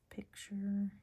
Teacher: Picture ends in a schwar.